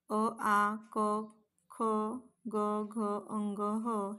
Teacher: कंठाचा स्पर्श होत असल्यामुळे याला या व्यंजन आणि स्वरांना कंठे वर्ण असे म्हटलेल आहे